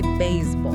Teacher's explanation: hitting the first vowel significantly harder than the second one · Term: accent the main beat